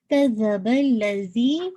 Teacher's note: نو، کذبل زال ہے نا، تو زا ہلکی سی آپ کی ٹپ آف دا ٹنگ باہر آئے گی، فرنٹ ایجز کے ساتھ آپ کے لگے گی نا